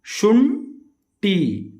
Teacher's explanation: ಯಾವುದೇ ಒಂದು ಪದದಲ್ಲಿ ಸೊನ್ನೆಯ ಮುಂದೆ ಟ ವರ್ಗದ ಟ, ಠ, ಡ, ಡ ಅಕ್ಷರಗಳು ಇದ್ದರೆ ಸೊನ್ನೆಯನ್ನು ಟ ವರ್ಗದ 5ನೇ ಅಕ್ಷರವಾದ ಣ ಅನುನಾಸಿಕ ಅಕ್ಷರವನ್ನು ಉಚ್ಚಾರಣೆ ಮಾಡಬೇಕು